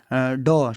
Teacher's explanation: ड क्या होता है, मूर्धन्य और सघोष के साथ साथ अल्पप्राण होता है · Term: उत्क्षिप्त व्यंजन